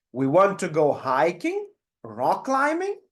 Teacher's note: feel how the voice is going up up with the first two options and goes down